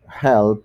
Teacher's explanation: Cuando se termina la palabra no queda ninguna vibración, solamente seco. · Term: voiceless